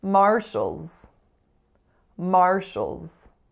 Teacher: two syllables the strongest syllable is the first and that first vowel sound is a complex are colored vowel